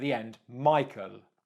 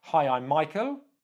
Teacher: Michael is more certain it's a statement you know who you are you know your name use a downward inflection